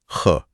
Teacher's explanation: हां ख में हवा का एक पफ निकलता है। कम हवा मतलब अल्पप्राण ज्यादा हवा मतलब महाप्राण।